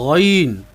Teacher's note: غین، اس کی آواز موٹی ہے اور حلق کے شروع سے ادا کریں گے